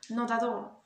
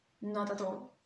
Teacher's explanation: On peut constater qu'ici, c'est entouré de voyelles. Donc, on va déjà lier tous ces mots ensemble, donc not at all, et en plus on va prononcer de, comme on a vu dans la première règle, donc ça donne not at all.